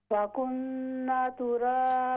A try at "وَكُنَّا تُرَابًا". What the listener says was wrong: ہاں جی، واو نہیں، یہ الف مدہ ہے،